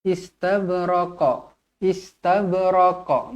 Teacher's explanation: Jadi bila huruf qalqalah, kalau dia mati dekat sini, dia kalau berhenti pada hujung ayat, dia akan jadi qalqalah kubra. Yang mana lagi berat lah.